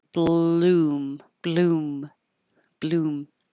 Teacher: as I open my lips for a b my tongue's already in the L position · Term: BL combination